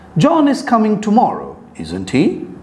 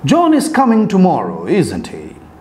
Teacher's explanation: the tag questions can either have a rising tone or have a falling tone